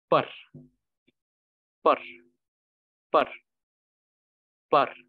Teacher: the sound of the r as a rolling r sound, r, will be emphasized greatly while reading it in the syllable reading method